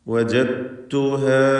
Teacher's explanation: വജത്തു സാക്കിനത്തായ ദാലിനെ തായിലേക്ക് പൂർണ്ണമായും ലയിപ്പിക്കുന്നു. ഇദ്ഗാം അൽ മുതജാനിസൈൻ അസ്സഗീർ എന്നാണ് ഇതിൻ്റെ പേര്.